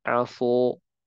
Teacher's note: Kalau kita tebalkan sinnya, maka menjadi aso.